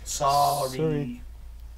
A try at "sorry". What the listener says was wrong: It's got one O, not two.